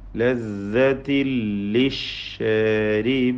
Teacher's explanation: ലദ്ദത്തിൻ തൻവീനിനെ പൂർണ്ണമായും ലാമിൽ ലയിപ്പിച്ച് മണിക്കാതെ ഉച്ചരിക്കുക. ഇദ്ഗാം ബിഗൈരി ഗുന്നക്കാമിൽ ലദ്ദത്തിൽ ലിശ്ശാരിബീൻ.